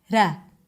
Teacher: sometimes it is pronounced as a light tap, ra. And that sounds to people like an R sound, where in fact, for Korean speakers, it is just another manifestation of the L sound.